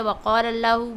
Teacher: وقال اللہ میں قاف اور اللہ کے نام کو موٹی آواز سے پڑھیں گے